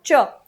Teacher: च के उच्चारण के वक्त हमारी जो जिव्या है वह ऊपर जाती है और आपका च यानी ये जो दांत जहां है मसूड़ा जहां